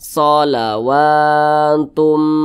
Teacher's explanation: Nah, ini namanya mad tabi'i, panjangnya 2 harakat atau kira-kira 2 ketukan.